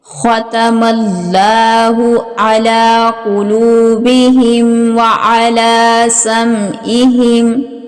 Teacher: خوا جو ہے یہ حروف مستعلیہ میں سے ہے، اس کو پر اور موٹا پڑا جائے گا